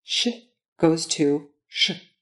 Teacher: in Russian, the pitch of the consonant drops a bit